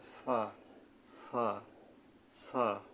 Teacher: দুই দাঁতের আগা থেকে নরম ভাবে উচ্চারণ হবে আমি আরেকবার বলছি জিহ্বার আগা উপরের মাঝখানের দুই দাঁতের আঘাত থেকে নরম ভাবে আদায় হবে